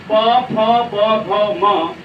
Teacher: ओष्ठ वर्ण होठों का संगम